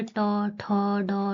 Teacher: जिन वर्णों का उच्चारण में जीहवा का अग्र भाग कठोर तालु के अग्र भाग से टकराता है, मूर्धन्य वर्ण कहलाते हैं।